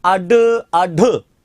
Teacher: जिह्वा ऐसा महसूस कराती है जैसे इन्हें फेंक रही हो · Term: उत्क्षिप्त